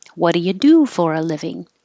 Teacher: do doesn't change because it's stressed you keep the real vowel